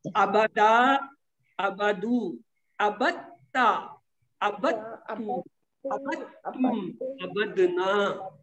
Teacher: دال کی آواز شروع میں 2 میں ہے، آخری میں ہے، درمیان والے 3 جو ابتا ابتو ابتم میں ان میں دال ہی نہیں ہے